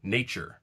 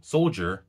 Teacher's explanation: This is an example of a wider phenomenon called yod coalescence, where certain consonant clusters featuring the palatal approximant undergo a fusing to become a sibilant. Tya becomes ch, as in nature. Dya becomes j, as in soldier.